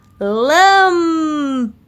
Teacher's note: O Lan é a antepenúltima sílaba tônica e classificamos em proparoxítonas